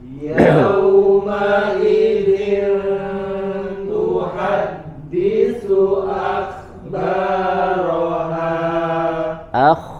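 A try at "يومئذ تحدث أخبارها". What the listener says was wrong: Huruf kha di situ tebal lagi ya. Yauma idzin, ma ada ma sangat sedikit sekali tingkatan gunnahnya. Kemudian yauma idzin. Nah, di sini ikhfa masuk di bagian gunnah yang memiliki tingkat kamilah ya. Yauma idzin tuhadditsu kemudian huruf kha-nya dibaca tebal ya.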